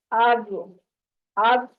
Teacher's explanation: اس میں کلکلا نہیں ہونا چاہیے، میں نے پہلے پڑھا ہے نا تو اس میں کلکلا ہو گیا، آواز پلٹ کے نہیں آنی چاہیے، مخرج کے اوپر ٹکا کے رکھنی ہے زبان، چھوڑنی نہیں ہے۔